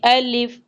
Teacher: الف، الف کو کبھی بھی الف الیف نہیں پڑھتے بلکہ نرمی سے پڑھیں گے الف۔ الف کا جو مخرج ہے وہ ہے منہ کے خالی حصہ سے ادا ہونا، یعنی نہ تو زبان کا اس میں استعمال ہو رہا ہے، نہ آپس میں دانتوں کو بند کیا جا رہا ہے، نہ حلق کا استعمال کیا جا رہا ہے، بلکہ منہ کے خالی حصے سے ایک آواز ادا ہوگی الف۔